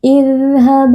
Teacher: huruf dzal bersifat rokhawah, beri sedikit aliran suara.